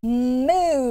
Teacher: mu so for that m what do we do we've got our lips are closed with that and then we move to an open mouth posture so then the rounded lips for ooh